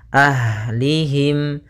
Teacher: pada lafal ha punya sifat yaitu sifat hamasnya, mengalir nafasnya